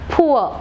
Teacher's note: so p, the bilabial sound p, and u. Diphthong is u.